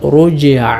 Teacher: ജീമിൽ ഖൽഖല കൊടുത്തുകൊണ്ട് റുജ്അ ഇങ്ങനെയാണ് ഓതേണ്ടത്